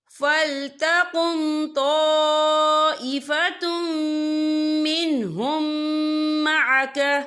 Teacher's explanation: اور آگے دیکھیں طَائِفَةٌ مِّنْهُمْ، یہاں میم ساکن ہے، میم ساکن کے بعد جو ہے میم مشد والا حروف آ رہا ہے، تو یہاں پر ادغام شفوی ہوگا۔ ہم پچھلے میم کو اگلے میم میں مدغم کریں گے اور ہم یہاں غنہ بھی کریں گے